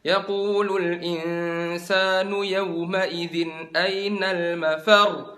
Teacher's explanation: Tapi kalau ada tasdid kayak mafar, angkat suaranya.